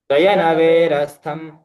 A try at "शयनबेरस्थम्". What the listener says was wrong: वे नहीं बे बेर शयन बेरस्थ अनि